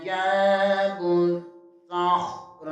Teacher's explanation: جیم زبر کے آگے الف مدہ ہے، اسے 1 لفظ کے برابر کھینچ کر پڑھیں گے. واو پیش کو صاد کے ساتھ ملائیں گے، صاد کو پر پڑھیں گے اور صاد زبر کو خا کے ساتھ بھی ملائیں گے.